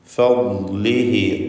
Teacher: ഫദ്ലിഹി പദത്തിൻ്റെ അന്ത്യത്തിലുള്ള ദ്വമീറിന് മദ്ദുസ്സിലത്ത് സുഗ്റ നൽകി 2 ഹറക്കത്തിൻ്റെ അളവിൽ ദീർഘിപ്പിക്കേണ്ടതാണ്